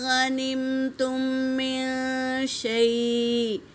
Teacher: میم ساکن کے بعد میم آیا ہے، تو یہاں پر پہلے میم کو دوسرے میم میں ملا کر غنّے کے ساتھ پڑھیں گے، اسے ادغام شفوی کہتے ہیں۔